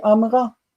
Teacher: when the accented syllable a is appended the vowel under the second root letter disappears